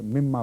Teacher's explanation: मिन मा मिलकर मिम्मा बन गया है